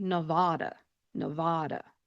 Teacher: with a very open jaw sound and a very open A when they are pronouncing that.